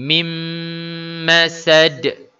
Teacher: secara dengung dipanjangkan dua harkat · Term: idgham maal ghunnah